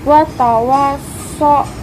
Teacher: mad tabi'i karena huruf wawu berharokat fathah bertemu alif. Cara bacanya dipanjangkan 2 harokat. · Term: mad lain